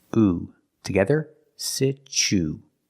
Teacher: the U is pronounced with a long ooh sound